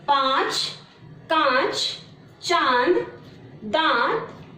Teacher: बच्चों, इसके उच्चारण में वायु नाक और मुंह दोनों से बाहर निकलती है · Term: अनुनासिक